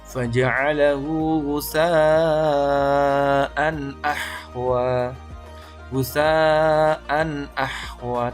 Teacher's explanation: Yang betul dijelaskan bunyi tanwinnya tanpa berdengung sama sekali. · Izhar halki ialah setiap nun sukun atau tanwin bertemu dengan hamzah, ha, kha, ain, ghin, dan ha. Cara membacanya adalah dibaca jelas tanpa dengung.